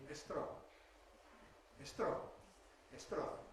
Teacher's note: So typical Spanish solution might be estro estro he is strong man instead of he's a strong man because in Spanish you have the habit of supporting such clusters by putting a vowel in front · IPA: [estrɒn]